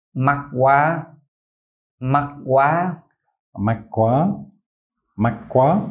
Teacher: There's no K in it. In the north, northerners pronounce QU with a K. Okay. But Southerners don't. It just sounds like a W.